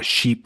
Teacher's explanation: and then Sheep we have the tense e sound